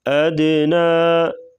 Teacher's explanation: ادنا، دال ساکن ہے تو یہاں پر قلقلہ کریں گے